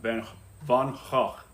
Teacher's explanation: So there's not a go, it's a Gogh. Kind of more guttural, kind of spit the words out.